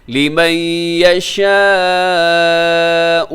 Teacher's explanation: یہاں لِمَن يَشَاء ادغام ہے اور اس کے بعد جو مد ہے وہ بڑی مد ہے